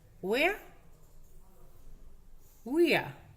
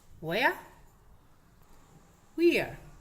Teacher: Acordaros que la R no se pronuncia